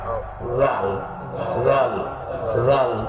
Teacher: জিহ্বার আগা সামনের দুই দাঁতের আগার সঙ্গে লাগবে। · জিহ্বার আগা সামনে দুই দাঁতের আগার সঙ্গে লাগবে সবাই এই জিহ্বার আগাটা জাল জাল জাল পাতলা জালের উচ্চারণ পাতলা